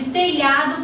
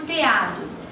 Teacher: E o apagamento do lhã de telhado por teado